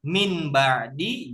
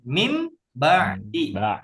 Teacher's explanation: Yang harusnya min ba'di jadi mim ba'di. Berubah mim disertai dengung. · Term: iklab